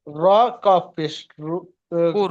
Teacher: র সাকিনের ডান দিকে পেশ আছে, তাই র কে পুর করে পড়তে হবে।